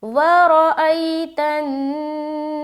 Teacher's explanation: نون کے اوپر شد آ گیا تو نون مشدد کا غنہ کریں گے